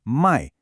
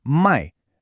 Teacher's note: It's the fourth tone, that sharp falling one. It's like you're dropping something heavy. · Notice the tone here is completely different. It's the fourth tone, that sharp falling one.